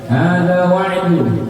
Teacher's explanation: Ya, alif lam Komariah ya, bisa dibaca lamnya ya, kelihatan ya, lamnya dibaca